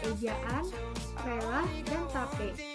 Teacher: Vokal ini dibentuk dengan bila lidah dinaikkan, tetapi sedikit lebih rendah dari vokal I. Vokal ini disertai dengan bentuk bibir yang netral, artinya tidak terlentang dan juga tidak melingkar. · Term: Fonem E